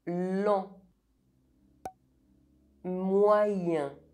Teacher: EN and EM are pronounced [ɑ̃] or [ɛ̃], both are nasal vowels